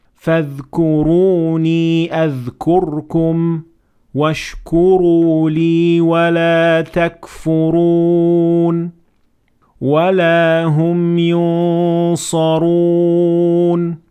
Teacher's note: So here we have several examples of ra that has to be pronounced full mouth because it has dhamma on top of it.